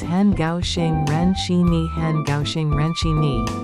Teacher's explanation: Han is third tone, gao xing is first and fourth tone, ren shi is fourth tone, and ni is third tone